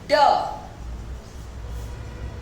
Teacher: ड पटक चफत सर्श voiced, ड voiced। डी आपका जो है voiced है। Place of articulation alveolar, manner of articulation plosive या stop